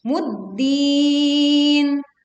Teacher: Alif lam dileburkan ke huruf dal sehingga kita langsung menekan pada huruf dal.